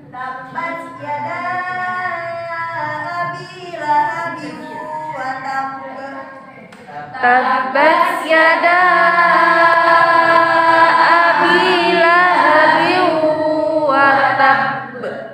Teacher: Qalqalah akbar adalah apabila huruf qalqalah bertasydid berada di akhir kata dan diwakafkan. Cara bacaannya adalah ditahan untuk menyempurnakan tasydid lalu dipantulkan.